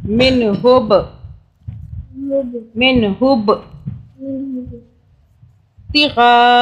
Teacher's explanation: پاک پہ ہم قلقلہ کریں گے، جھٹکے سے پڑھیں گے با کو